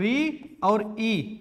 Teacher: जब भी हम ऋ का उच्चारण करते हैं तो एक ही ध्वनि नहीं सुनाई देती। दो ध्वनि सुनाई देती है।